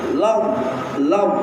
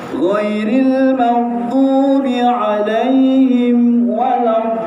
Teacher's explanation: kaedah huruf dha itu maksudnya lidah kita mesti kita gigit sudah siap-siap apabila kita sebut huruf lam itu.